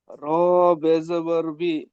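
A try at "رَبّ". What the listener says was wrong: র বে নয়, এখনো পর্যন্ত আপনি সেই বে বাই পড়ে আছেন। র বা জাবার রব, বলেন। জাবার রব,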